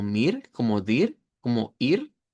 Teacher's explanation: En el caso de los que terminan con esa R, se hace una A centralizada. Eh, por el lado austriaco, los dativos sonarían como mir, como dir, como ir, en este caso, con R suaves.